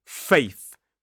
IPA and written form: feɪθ (faith)